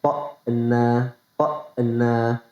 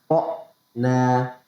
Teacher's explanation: Banyak pembaca Al-Quran yang membaca huruf hamzah ketika huruf berharokat sukun dibaca dengan memantul atau qalqalah. Padahal huruf hamzah itu nggak memiliki sifat qalqalah, teman-teman. Jadi nggak boleh memantul ketika sukun. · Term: Hamzahnya mati